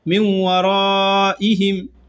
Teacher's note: یہاں نون ساکن کے بعد واو آ رہا ہے تو غنہ کے ساتھ ادغام کیا جائے گا